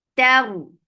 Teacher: Ta will be light, but ra will be heavy. Taru. You're lifting your tongue up to make this ra heavy.